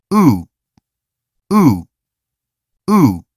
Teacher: /ʊ/ feels more rounded and gathered farther back. · Don't turn this into /u/. This is not a long, deep sound. It's a short, rounded sound.